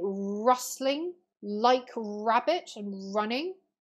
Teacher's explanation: liquid alliteration in rustling like rabbit and running the l and the r